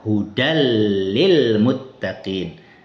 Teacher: Ini tanwinnya hilang. Kemudian gunahnya atau dengungnya yang ada pada tanwin juga hilang. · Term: idgham sempurna